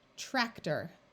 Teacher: once again this o r becomes muffled and sounds more like er